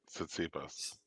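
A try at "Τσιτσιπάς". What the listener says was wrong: The T is silent.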